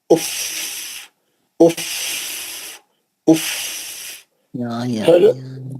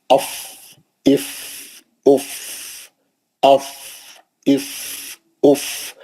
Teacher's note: یہ دیکھیے میں بتایا تھا, یہ نیچے کے ہونٹ ہے, اوپر کے دو دانت اس پہ بیٹھ گئے دانت کے اوپر سختی سے, اور ہوا پیچھے سے آپ نے پریشر مارا